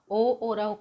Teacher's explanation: ओ और औ का उच्चारण स्थान कंठ और ओष्ठ है। इसका अर्थ यह है कि कंठ से यह ध्वनि निकलती है और होठों का आकार परिवर्तन होता है। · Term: कंठोष्ठ